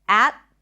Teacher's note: could be a held T